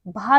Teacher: ओष्ठ से उच्चारित होता है और महाप्राण भी है और घोष व्यंजन भी है